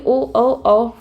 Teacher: होठ और कंठ इन दोनों की सहायता से जो वर्ण बोले जाते हैं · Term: कठो से वर्ण